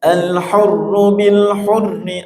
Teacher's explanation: ada ra yang bertasydid, di tafkhim tebal